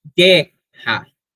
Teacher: A sílaba tônica de guerra é guer. Então nós vamos contar as sílabas poéticas apenas até o gu aqui, no mesmo caso, nós temos novamente a união de duas sílabas átomas, nu, que é átomo porque não é acetuado.